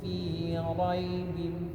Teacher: raibin ini ya-nya sebelumnya ada huruf berharokat fathah, maka ya-nya dibaca satu ketuk saja